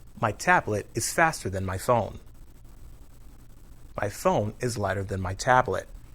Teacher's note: When we say the word than by itself, we pronounce it than. But when we use than in a sentence, it's usually unstressed and the vowel is reduced to a. You almost don't hear the vowel at all.